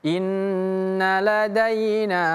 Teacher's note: Tapi karena setelahnya ada huruf alif yang berdiri setelah huruf nun ini, maka nun yang panjangnya dua harakat ini menjadi ee lima harakat namanya mad jaiz munfasil